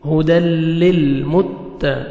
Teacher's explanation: تا کو باریک پڑھیں گے، قاف کو موٹا کر کے پڑھیں گے، 1 سیکنڈ کھینچیں گے، یا مد ہے، لاسٹ میں نون ساکن ہو جائے گا جب سٹاپ کریں گے۔